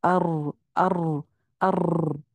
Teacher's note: اس کے اوپر زبان پر کپ کپی اور لرزہ طاری ہو جاتا ہے · اور وہ اس کو نا وہ ایک دفعہ لگنے کی بجائے اگر ہم اس کو تھوڑا لمبا کرنا چاہیں، جیسے شد پڑھ رہے ہیں یا کوئی اور اس کے اوپر صفت کر رہے ہیں، تو وہ کیا ہوتا ہے کہ اس کی آواز وہ بجائے اس کے کہ وہ ایک را سنائی دے، وہ دو چار را اکثر آپ نے نوٹس کیا ہوگا کہ وہ سنائی دیتے ہیں ار، اس طرح سے. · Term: را کی چھٹی صفت